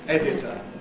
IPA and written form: ˈedɪtə (editor)